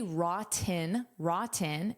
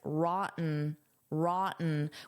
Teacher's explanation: I can say rotten, rotten, and pronounce those Ts, or I can use a glottal stop, which sounds like rotten, rotten, which native speakers often do.